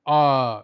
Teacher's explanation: जब आ बोलते हैं तो आपका मुंह पूरा खुल जाता है। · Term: विवृत स्वर